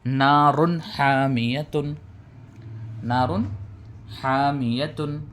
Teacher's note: اس کو بغیر غننے کے ظاہر کر کے جلد پڑھیں گے۔ اسی کا نام اظہار ہے۔